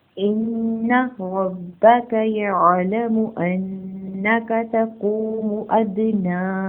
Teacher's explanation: नून मुशद्दद पर गुन्ना करेंगे, नून की हरकत को लंबा नहीं करेंगे। रॉ के ऊपर ज़बर है, इसको पूर्व पढ़ेंगे।